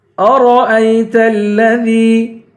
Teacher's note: را کو پر پڑھیں گے، حمزے کو یا سے ملائیں گے